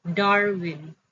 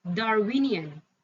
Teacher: exle in the word Darwin str is the first syllable Darwin when ion is attached stress shifts to the second syllable from the left yielding darwinian